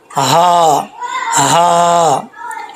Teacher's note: دوسری ہے ہا موٹی ہا جو پڑھی جاتی ہے، جو سینے سے نکلتی ہے